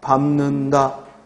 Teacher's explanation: 음절의 끝에 니을 비읍은 자음군 탈락에 의해 단순화에 의해 대표음 비읍이 되고 이 비읍은 뒤에 니음과 만나서 비음화가 일어나서 미음이 되죠.